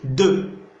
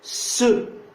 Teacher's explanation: Quand vous dites de, l'apex touche les dents. Mais quand vous dites ce, vous sentez que l'apex ne touche pas les dents. Ce, il touche derrière et un peu en haut.